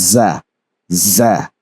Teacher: it has the sharp and whistling sound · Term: whistling letters